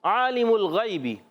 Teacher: غیبی، یا سنگ سے پہلے زبر آ گیا، یالین ہو گیا ہے، نرمی سے پڑھیں گے، کھینچیں گے نہیں۔ اور غین حرف مستعلیہ میں سے موٹا ادا کریں گے